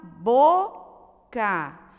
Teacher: Palavrinha boca, ela não é oxítona, ela é paroxítona. Por quê? Porque a sílaba tônica é no bo